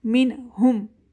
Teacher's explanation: من ہم، اب یہاں پہ نون ساکن کے نیکسٹ میں ہلکی لیٹر ہ ہے تو یہاں پہ وائس کلیئر ہو رہی ہے